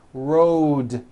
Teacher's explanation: Road also has a voiced d ending Road it's not wrote